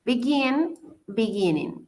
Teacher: Begin tiene la acentuación al final, es decir, en el gin.